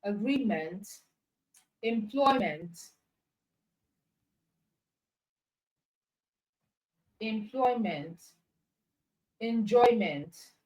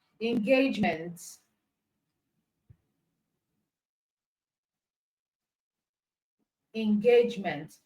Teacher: The suffix meant will not be stressed. The stress is on the root word.